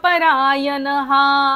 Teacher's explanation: बोलायचा नाहीये त्याचा उच्चार स होणार आहे य सदा मुक्त एव शेवटचा जो विसर्ग आहे तो पूर्ण बोलायचा